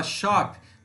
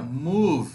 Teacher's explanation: Se você fala shop, não vibra nada aqui, ó. Você pode pôr o dedo aqui na garganta, você não vai ver ela vibrando. Shop. Agora, quando você coloca aqui, ó, move, dá aquela vibração.